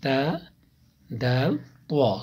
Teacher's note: زبان کی نوک اور ثنایا علیہ کی جڑ، زبان کی نوک اور ثنایا علیہ کی جڑ۔